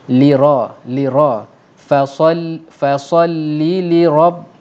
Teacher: Ra at-tafkhim, bermaksud ra yang ditebalkan. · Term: ra tafkhim